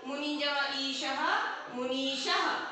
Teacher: मुनि में ह्रस्व ई है, यहाँ पर ईश में दीर्घ ई है, दोनों को मिलाएंगे तो दीर्घ हो जाएगा। मुनि जमा ईशः, मुनीशः, यहाँ पे विसर्ग भी लगेगी, मुनीशः।